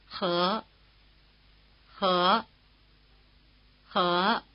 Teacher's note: One of the initial consonants we've been using, the one written H, does perhaps deserve some comment. You can get along well enough thinking of it as like an English H, but it's noticeably rougher. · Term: rough H